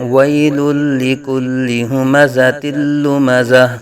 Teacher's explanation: گول تا کو ہا ساکن میں بدلا جاتا ہے وقف میں